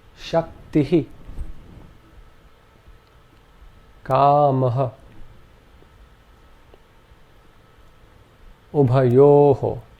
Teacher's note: this is simply an aspirate, where the breath is expelled in a very short burst along with the preceding vowel sound. Some examples to illustrate this are Shaktihi, Kamaha, Ubhayoho. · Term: visarga